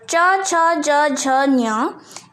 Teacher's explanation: इनको अगर तुम उच्चारण करोगे तो वो तालु को स्पर्श करेगा। तालु मतलब तुम्हारे मुंह के अंदर जो ऊपर भाग होता है उसे तालु कहते हैं।